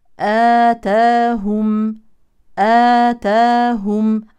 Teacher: اما هذا الالف فهو مسبوق بهمزه مفتوحه اذا هو مد بدل يمد حركتين